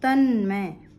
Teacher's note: ये जो तत् का त है ये मैं से मिल गया, तो ये ता अपने ही नासिक्य में बदल गया, तन्मय बन गया।